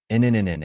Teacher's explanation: placing the tip of your tongue against the ridge just behind your Upper Front Teeth then push air through your nose while keeping your mouth open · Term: n Sound